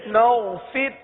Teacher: حطتن، نون غین زبر نو، نو، فا را زیر فر، نو فر. را کو باریک پڑھیں گے، فر کی را کو باریک پڑھیں گے. نو فر، لام زبر لا، نو فر لا.